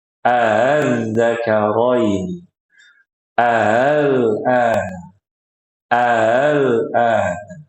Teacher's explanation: A yang pertama dibaca jelas, A yang kedua dibaca dengan cara tashil, kayak diayun.